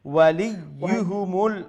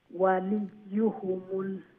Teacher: ওয়ালি যখন কইলা লাম ইয়া যে লি এক ইয়া উচ্চারণ হইব, এরপরে ইউহুমুল যখন কইবা দ্বিতীয় ইয়া উচ্চারণ হইব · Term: দুইটা ইয়া